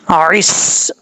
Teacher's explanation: کاف کے بعد عین ہے، عین کے نیچے زیر ہے، اس کے بعد سین ہے. عین کو ہم نے سین کے ساتھ ڈائریکٹ کنیکٹ کرنا ہے، الف اور لام کو چھوڑ دیں گے